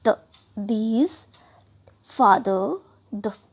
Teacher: इसमें अब बहुत ज़्यादा साउंड जो है हमारा पुश ऑफ एयर ज़्यादा होगा और वाइब्रेट भी हमारे वोकल कॉर्ड में ज़्यादा होगा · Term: th का दूसरा साउंड